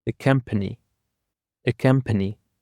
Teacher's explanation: Accompany actually consists of 3 syllables, and the stress is on the first syllable.